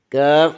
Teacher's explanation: زبان کی جڑ کوے کے قریب سخت تالو سے لگے تو بریک کاف یعنی کش والا کاف ادا ہوتا ہے۔